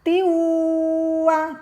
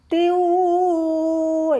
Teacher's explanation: Kum bikuwa, wawunya bertasdid maka ditekan, kemudian tiwa, tanwin bertemu wawu dibaca mendengung disebut idgham bihunnah